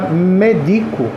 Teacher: A sílaba tônica é o di. Então ela é uma paroxítona.